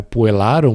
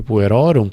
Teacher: são sempre com A longo e um O longo